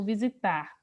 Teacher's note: a sílaba tônica é a última sílaba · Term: oxítona